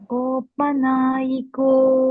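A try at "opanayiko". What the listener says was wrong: Not na. Opanaiko. The long one, the long vowel is O. The two O's must be dragged. Then the A and the I are all short.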